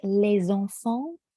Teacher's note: For example, les enfants, you hear it's a Z sound, but when you see it, it's an S sound.